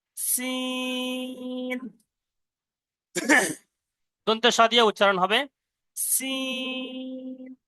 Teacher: সিনটা উচ্চারণ হবে ছর মতন হয়ে, দন্তেশ্বর মতন হয়ে জিভের আগা এবং উপরের নিচে দাঁতের আগা।